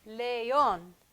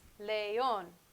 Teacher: our strong vowels what does that even mean that means that these vowels when placed next to each other each get their own syllable